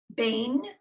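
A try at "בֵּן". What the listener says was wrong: Vein. There's no dot in the middle, so it's a vet.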